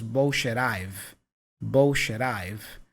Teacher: the T for bullshit is joined with the I for I've with a flap sound